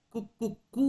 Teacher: ಆ ಮೂರನೆಯ ಕೂ ನಲ್ಲಿ ಇರುವಂತಹ ದೀರ್ಘ ಸ್ವರ ಇದೆಯಲ್ಲ ಅದನ್ನ ಆತ ಪ್ಲುತ ಸ್ವರ ಎಂದು ಕರೆಯುತ್ತಾನೆ